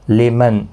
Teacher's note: لمن نون ساکن کے بعد حروف حلقی کا حمزہ ہے، اظہار حلقی ہوگا